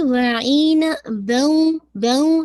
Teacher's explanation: पहले बा की फतह को वाजे कीजिए फिर गुन्ना को ऐड कीजिएगा